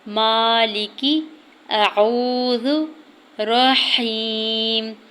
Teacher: یہ تینوں حروف جو ہیں الف، واو اور یا جب مدہ حالت میں ہوں گے تو یہ منہ کے خالی حصے سے ادا ہوں گے